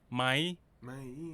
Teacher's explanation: When spoken quickly, the rising tone changes to a high tone.